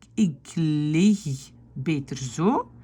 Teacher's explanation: c'est le K qui devient G